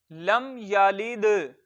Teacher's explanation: दाल हुरूफे कलकला में से है और साकिन है, इसके ऊपर जज्म है, साकिन है, तो कलकला खूब जाहिर होगा